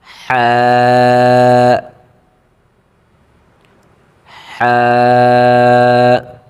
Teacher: 1 আলিফ টান দিয়ে চিকন করে পড়তে হবে, কণ্ঠনালী থেকে আওয়াজ আসবে